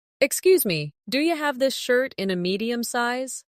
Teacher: Listen to how do you becomes do ya in natural speech.